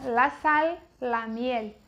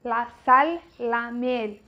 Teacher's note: no espanhol o L tem som de L, não é igual no português que o L tem som de U